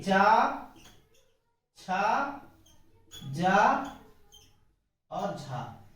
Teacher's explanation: मुख के विभिन्न भागों में घर्षण करते हुए निकलती है, इसलिए इनको स्पर्श संघर्षी कहते हैं